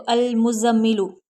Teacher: मीम के ऊपर रुकना है, थोड़ी देर ठहर कर पढ़ने को गुन्ना कहते हैं